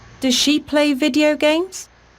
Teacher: does she play video games also has a rising intonation